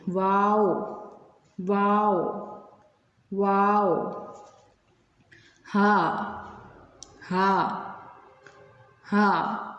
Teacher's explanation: ये हरूफ हल्की नहीं है, हलक से अदा होगा, लेकिन ये मोटे हरूफ में आता है। इसको हम ज़रा मोटा करके पढ़ते हैं। · वाओ की अदायगी के वक्त हमारे होंठ 2 दफ़ा गोल होंगे